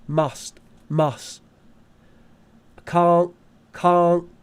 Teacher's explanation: often british people british people uh will use a stop instead of a t